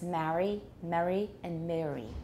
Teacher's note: on the east coast a lot of people have three vowels there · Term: three different vowels